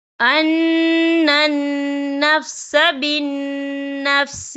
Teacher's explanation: یہاں دونوں جگہوں پر غنہ ہوگا کیونکہ یہاں دونوں جگہوں پر نون مشدد ہے